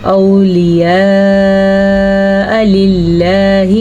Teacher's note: میں نے لفظ اللہ کو باریکی سے ادا کیا کیونکہ زیر آ رہی ہے